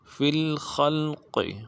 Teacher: خا کو آگے لام کے ساتھ ملانا ہے، اور قاف کو موٹا ادا کرنا ہے